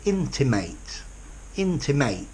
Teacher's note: familiar person intimated a verb notice with the verb to intimate there is a secondary stress on the int at the beginning